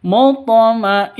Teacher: gunah musyaddadah dengungnya dua ketuk